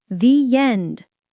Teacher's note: Linked with a y sound